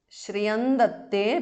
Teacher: Shriyan Datte because of Sandhi. Anuswara changes to Nu there.